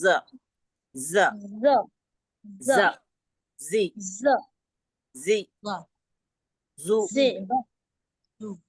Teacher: जो ऊपर के और नीचे के दांत एक दूसरे के करीब आ जाते हैं। मुंह खोल के ज नहीं बोला जाता। · देखिए, जबान ज जब हम कहते हैं तो एक किस्म की सख्ती आती है, ठीक। और जबान की नोक जो है वो हमारे नीचे वाले जो दो दांत है उसकी जड़ अंदरूनी हिस्से से लगती है, और जो ऊपर के और नीचे के दांत एक दूसरे के करीब आ जाते हैं।